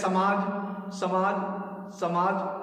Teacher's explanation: ऐसे जब हम दंत स का प्रयोग करें कभी भी, तो दंत स में हमें जिह्वा हमारी दांत से टकरानी चाहिए। दांत जिह्वा का अग्रभाग, जैसे समाज, समाज, समाज।